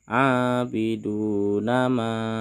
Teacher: abidunama ini merupakan Mad Jaiz munfasil yang memiliki panjang lima harakat